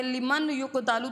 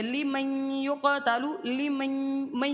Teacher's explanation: میم کو سیدھا یا کے ساتھ ملا دیں گے، نون کو نہیں پڑھیں گے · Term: ادغام